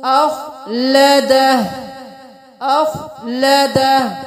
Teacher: अब इस खौ को हम मोटा अदा करेंगे